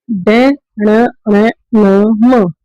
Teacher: ये एक वर्ण होते हैं जिनका उच्चारण करते समय ज्यादा हवा हमारे नाक से निकलती है। इससे निकलती है, नाक से आवाज आती है, इसी प्रकार इसको हम अनुनासिक बोलते हैं।